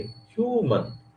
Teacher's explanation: ये देखिए ह्यूमन, है ना, ह्यूमन, है ना, देखिए ह्यूमन, है ना, इस तरीके से ह्यूमन, ह्यू स्ट्रेस दिया और नीचे आ गए